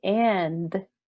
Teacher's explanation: There's still like a little sound at the end, but it's not adding a vowel, right?